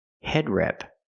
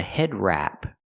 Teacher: word head rep a head rep it's pronounced a head wrap we use the a sound like black cat it's more open